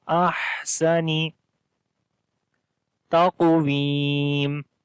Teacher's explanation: So we long here 3 to 4 seconds as we say fi ahsani. On the ha we make hams quality, like the continuation of our breath